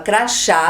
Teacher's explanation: também tem a última sílaba tônica terminado em a